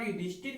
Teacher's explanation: ये दंत स जो है मूर्धन्य स में परिवर्तित होगा।